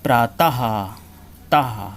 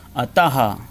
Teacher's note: विसर्ग, विसर्ग में 2 बिंदी लगा देते हैं, विसर्ग को इस चिन्ह द्वारा दिखाया जाता है। इसके उच्चारण में स्वर के साथ हल्के हा का भी उच्चारण होता है,